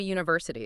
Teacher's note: university actually starts with a consonant sound. It's that y sound at the beginning